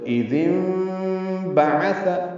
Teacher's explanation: میم سے آگے با آنے کی وجہ سے، تو اذم بعث، با عین ثا جلدی پڑھنا ہے، ثا کو نرمی سے پڑھنا ہے